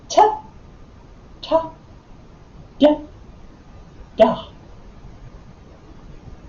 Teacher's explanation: the cerebral, the tongue is going to the roof of the mouth but not touching, and it's a little bit more challenging for the exercise or a ballet for the tongue to do.